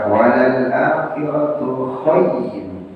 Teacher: Contohnya di ayat yang keempat, walal akhiratu khayr. Khayr itu layyin saja. Ya, jadi tidak dipanjangkan.